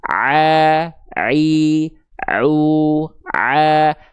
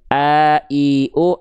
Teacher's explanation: Kalau ain di tengah tenggorokannya a i au, kalau hamzah di tenggorokan paling dangkal lagi, paling pangkalnya a i u.